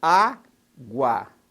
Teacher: a semivogal u mas a vogal a na mesma sílaba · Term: ditongo